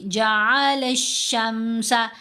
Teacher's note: ہم نے لام کو شین سے ملانا ہے اسٹرانگلی